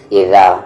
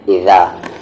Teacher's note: ذال کے مخرج کو یاد رکھیں، زبان کا کارنر اور سامنے والے اوپر کے دانت کا کارنر